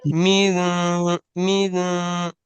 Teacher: من آپ بھی ناک میں من آواز لے جانے کی کوشش کریں پوری کی پوری